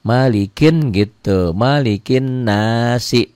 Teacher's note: bukan hanya panjang bukan hanya ada madnya tapi ada dengung ke hidung ada gunahnya